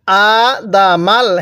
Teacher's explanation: হামজায়ের মধ্যে টান, দাল এবং মিমের মধ্যে কিন্তু টান দিব না